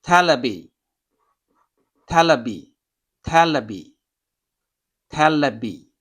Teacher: V in English doesn't have a equivalent sound in Japanese, so they become a B. So television, for example, it will be telebi, telebi, telebi, telebi.